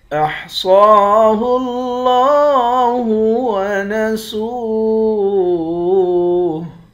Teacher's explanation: صاد کو موٹا بھی پڑھیں گے۔ صاد موٹے حرف میں سے ہے۔ صاد پر کھڑا زبر ہے۔